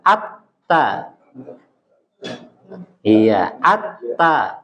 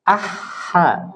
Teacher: karena huruf ta itu kuat termasuk huruf yang kuat ya termasuk huruf syidah maka dia agak ditempel ditekan